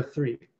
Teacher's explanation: this you know infamous th sound in english right so that voiceless interdental sound that we have in the word three